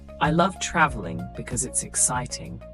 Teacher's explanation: emphasize love and use a rising tone to show enthusiasm